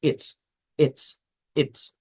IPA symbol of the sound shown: ɪ